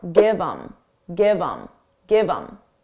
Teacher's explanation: Get rid of the H and it will sound like im.